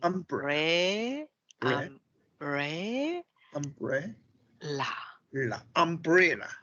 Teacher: So the stress should be on the second syllable.